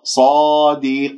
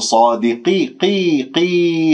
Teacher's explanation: والقاف مفخمة مرتبة أخيرة لأنها مكسورة، وهي تكن فهي وإن تكن بأدنى منزلة فخيمة قطعا من المستفلة، فلا ترقق القاف، تقول صادقي قي قي خطأ قي قين، لا تجعلن في هذه الياء، اقفل فتحتي الالف ثم بعد ذلك تخفض الفك السفلي قليلا حتى لا يصير عندك ياء فيها غنه.